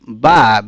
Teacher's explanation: বা উচ্চারিত হয় নিচের ঠোঁটের ভেতরের অংশ থেকে